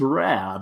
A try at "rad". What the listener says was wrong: Yeah, it's not rad. It's rad. Well, it doesn't have to be that long, but rad.